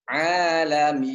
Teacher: Kemudian ainnya ke hidung, min. Pas bunyi M di hidung, tapi I-nya jangan di hidung. Alamin. Nah, pas bunyi I-nya silakan dipencet.